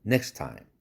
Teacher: next time에서 또 트 날라가야죠?